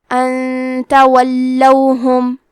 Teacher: کلمت ان کے آخری میں نون ساکن ہے، پھر حرف التا ہے کلمت تولوہم، یہاں حکم ہے اخفاء تو ہم یہ حکم کو غنہ کے ساتھ ادا کریں گے